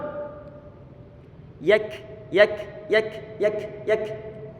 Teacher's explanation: Dia berikan sifat hams pada huruf kaf yang berharokat, sebagaimana di saat huruf kaf dalam keadaan sukun.